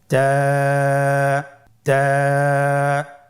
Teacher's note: তায়ের মাখরাজ কোন জায়গা থেকে? জিহ্বার আগা সামনের উপরের 2 দাঁতের গোড়ার সঙ্গে লাগিয়ে উচ্চারিত হয়।